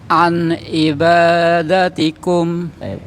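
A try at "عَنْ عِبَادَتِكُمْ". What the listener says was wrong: Yang anda benar Pak, yang ai coba Pak. Ai. Ai. Ai. Yang ain udah benar Pak, yang a udah benar, tinggal yang ai.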